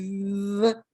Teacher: And the V, you know, if the audience wants to put your hand under your chin and say, v, you'll feel vibration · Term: voiced